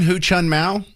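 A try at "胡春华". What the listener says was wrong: Hu Chunhua. Chunhua. Hua, or H-U-A for the last syllable there.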